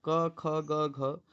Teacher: क वर्ग कंठ से बोला जाता है।